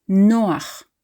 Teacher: It's not Noach, stressing the last syllable. It is Noach, stressing the second from last